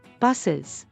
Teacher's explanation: And it is pronounced is when it follows a sibilant sound. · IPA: /ɪz/